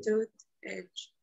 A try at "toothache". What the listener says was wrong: Ache. No lleva H, no lleva Che. Bueno, la Che ya no existe. CH. Toothache.